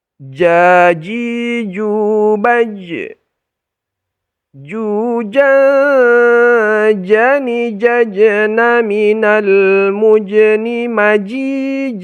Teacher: bagian lidah bagian tengah yang kita tempelkan ke langit-langit mulut jadi bisa kita rasakan Ada Tengah lidah kita kita tempelkan ke · Kalau ja itu sudah ujung lidah. Dia bukan ujung lidah, tetapi tengah lidah. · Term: wastul lisan, huruf jim